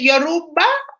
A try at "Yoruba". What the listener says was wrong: Perfecto.